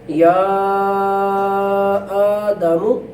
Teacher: حمزہ ہے اس کے اوپر کھڑی زبر کی وجہ سے تھوڑا سا کھینچا جائے گا